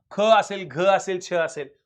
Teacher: हयुक्त उच्चार आहे महाप्राण